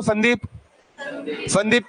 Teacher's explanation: तो बोलो, कहां जा रही है जीभ? दांत में जा रही है।